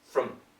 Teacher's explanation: So it is a schwa sound, but super short.